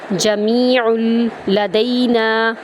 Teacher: آئین کو لام میں داخل کریں گے، آئین کو وسط حلق سے ادا کریں گے